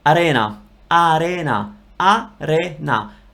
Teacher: I'm not rolling the R, it's just an R that is different from English because English R comes from here, whereas Italian R comes from the tip of your mouth.